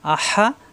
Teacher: হামজা জবর হা জবর হা কন্ঠনালিতে সাফ